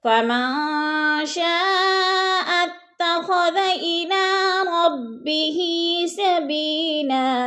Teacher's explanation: سبیلا، سبی یا ساکن سے پہلے با کے نیچے زیر ہے تو یا مدہ ہے، یا مدہ کو بھی 2 حرکات کے برابر ہم نے کھینچ کر پڑھنا ہے